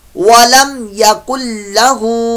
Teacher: इदगाम हो रहा है लेकिन बगैर गुन्ने के। बालो यहाँ नून की आवाज निकाल देते हैं, हालांकि नून की आवाज निकलती नहीं है, समझ में नहीं आती। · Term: इदगाम बिला गुन्ना